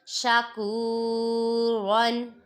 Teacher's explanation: را پہ دو زبر ہے، اس کو ہم پر پڑھیں گے